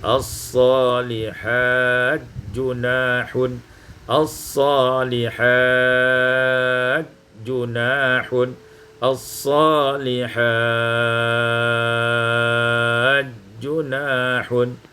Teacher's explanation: Pada ayat yang ke-93, as-salihati junahun, idghamut ta fil jim, diidghamkan ta pada jim maka menjadi as-salihat junahun